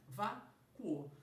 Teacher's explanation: Só que dessa vez eu tenho aí um cuo, um U fraco e um O forte, o que faz com que a posição desse encontro seja semivogal com vogal, logo um ditongo crescente